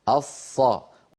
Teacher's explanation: أقصى اللسان عند نطقنا للصاد قد ارتفع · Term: الصاد